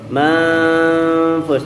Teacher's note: Manfush ya, sambil mendengungkannya, mengikhfakannya 3 harokat. Fush ini mad arid lisukun, ujungnya adalah shin.